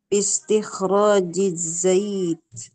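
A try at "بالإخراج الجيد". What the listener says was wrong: Agak ke JJ ya. Kalau satu-satu iya za-nya udah z. Kalau ditambahin kata sebelumnya agak coba dihitung lagi ya.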